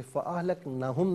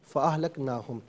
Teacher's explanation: نا کھڑا زبر ہے نا ان پر، اسے ایک الف کی مقدار کھینچ کر پڑھیں گے